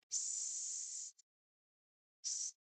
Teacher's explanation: So this is a continuous hissing sound.